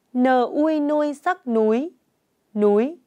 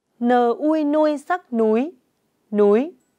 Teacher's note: Tiếng núi có âm đầu N, vần ui và thanh sắc.